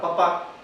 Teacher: primer sonido es mi labial porque se pronuncia en los labios es sorda porque están las cuerdas vocales relajadas y en este caso es por aire pulmonar que es donde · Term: bilabial